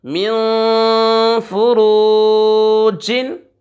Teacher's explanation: मीम मुतहरिक, नून साकिन, फ़ा भी मुतहरिक है, रा के ऊपर पेश हो, रा को पुर पढ़ते हैं यानी मोटा करके पढ़ते हैं। वाव साकिन वाव से पहले पेश वाव मद्दा खींच कर पढ़ेंगे और जीम मुनव्वन है।